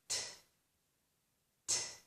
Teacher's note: This sound completely stops the air for a moment and then releases it in a burst. This one is t, t. · With this sound, the tip of the tongue presses behind the upper teeth. There is a ridge behind our upper teeth, and my tongue pushes up against that ridge. · It presses against that ridge. And when I do that, I stop the air. I stop it completely, and then I release it.